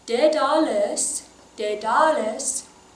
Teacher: I like to maybe put the emphasis on the middle syllable.